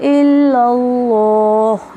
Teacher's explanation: لفظ اللہ کلام سے پہلے زبر ہے تو لفظ اللہ کلام موٹا پڑا جا رہا ہے